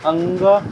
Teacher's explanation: जैसे अंग में कंठ और नासिक्य दोनों का उपयोग होता है। अतः इसका उच्चारण स्थान कंठ नासिक होगा।